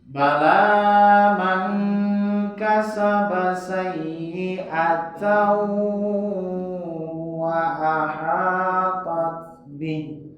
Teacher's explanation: Ya, bertemu dengan huruf waw. Waw itu walaupun tidak memiliki tanda tasydid atau sabdu tetap harus dibaca dengung ya. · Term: idgham bihuna